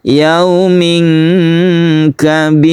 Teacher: Kemudian di sini ada ikhfa yaumin kabir. Yaumin kita tahan di sini, kita dengungkan, kemudian kita samarkan. Yaumin kabir, itulah ikhfa.